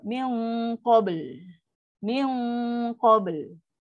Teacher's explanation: So dia bunyi dengung pun dengung yang tafkim yang tebal sebab dia adalah huruf qaf